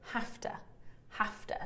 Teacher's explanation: We would say hafta, hafta. So we change that v sound to a f sound, and then the schwa at the end.